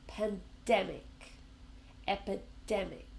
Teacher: Pandemic has three syllables, but we also stress the same sound, the dem.